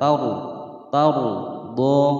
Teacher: Tauru ada ro sukun sebelumnya berharokat fathah, dia dibaca tebal. Tauru tauru do tauru do, donya dibaca panjang selama dua ketukan mulhaq maltobi'i.